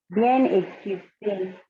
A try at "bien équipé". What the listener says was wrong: Okay, you didn't do liaison. Bien équipé, bien né. You just read bien équipé. You didn't do liaison. Bien équipé, né.